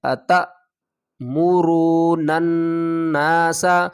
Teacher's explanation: نون کو نون سے ملائیں گے اور اس نون کے اوپر غنہ کریں گے کیونکہ نون مشدد ہے